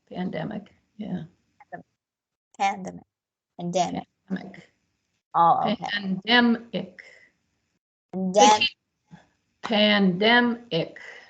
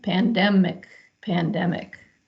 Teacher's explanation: and the dem is the syllable the strong syllable the syllable with the accent